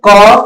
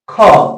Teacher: क में कम लग रहा है कम वायु निकल रहा है ख में अधिक वायु निकल रही है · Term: महाप्राण